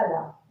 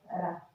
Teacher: पार्श्विक में आ जाएगा आपका ला, और लुंठित में आ जाएगा आपका रा